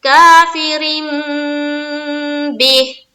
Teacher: तनवीन या नून साकिन के बाद बा आ जाए तो नून को मीम से बदलकर गुन्ना और इख्फा के साथ पढ़ेंगे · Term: इकलाब